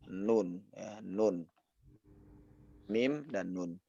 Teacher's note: Dan ini juga huruf nun dan mim ini juga punya asal muasal makhraj, yang mana mim itu dari bibir ya, bisa kita rasakan sendiri. Mim dari bibir dan nun adalah dari lisan ya